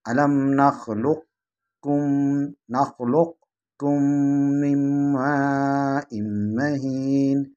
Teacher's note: कलकला की आवाज़ नहीं आनी चाहिए। अलम नख़्लुक़कुम मिन माइन महीन, ये इदगाम नाक़िस।